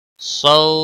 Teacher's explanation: سو واولین ہے تھوڑا نرمی کے ساتھ کھینچ کر ادا کریں گے